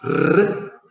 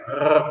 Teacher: En vez de la vibración con la punta de la lengua, r, la hacen con el cuerpo de la lengua, r, como cuando uno hace gárgaras.